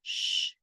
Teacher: la lengua no toca ni el paladar de arriba ni el paladar de abajo la lengua se mantiene vibrando en el centro de la boca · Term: la s de shanti